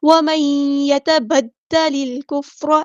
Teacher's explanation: ومن ایک الف کے برابر رکیں گے، ادغام مع الغنہ